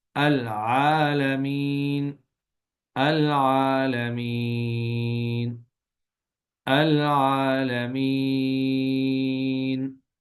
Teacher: اسے 1 گنا، 2 گنا اور 3 گنا یعنی تینوں طرح کھینچ کے پڑھ سکتے ہیں۔ تو اصل میں اصطلاحی زبان میں اگر تجوید کے اندر اس کو دیکھیں تو اس وہاں کے کہتے ہیں کہ یہاں پہ قصر، توسط اور طول تینوں کر سکتے ہیں۔ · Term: مد عارض وقفی